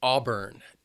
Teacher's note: Two syllables and the stress is on that first syllable.